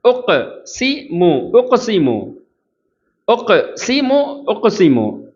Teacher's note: உக் காஃபில் குத்துப் ஜத்து. அப்போ காஃபில் கல்கலாவுடைய எழுத்து அசைவு ஏற்படும்.